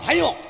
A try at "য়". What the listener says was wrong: এই! হ্যাঁ ও নয়, ইয়।